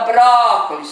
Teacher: já vai ver que a sílaba tônica é o bro